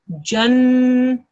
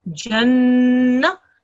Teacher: And because it's a mushaddad letter, you've got to stress on it. Because the mushaddad letter happens to be a noon mushaddad, you've got to make the gunna sound. So it's jan.